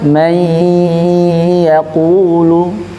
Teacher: Digunahkan harus dimasukkan ke hidung. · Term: ghunah